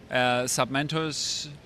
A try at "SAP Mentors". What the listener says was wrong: Sub. SAP. SAP. SAP Mentors, not sub. Okay. It sounded like sub. Get the accent.